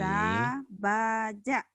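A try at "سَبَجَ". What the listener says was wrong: Tapi nggak boleh panjang ya Bu ya. Nggak boleh.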